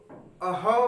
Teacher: उसी प्रकार चरण में अघोष जो विसर्ग है वो अह बोल रहे हैं तो हमारा कंपन नहीं हो रहा है, लेकिन वायु हमारे मुख से ज्यादा दिखाई पड़ रही है, इसीलिए कहा जाता है विसर्ग।